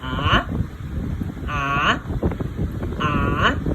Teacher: Rising tone, the second tone is going up